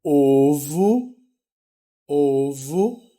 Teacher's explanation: o primeiro ó eu leio como ó e o último ó eu leio com som de u